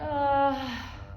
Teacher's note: the aspirate offset which is the vocal folds are abducted while air continues to flow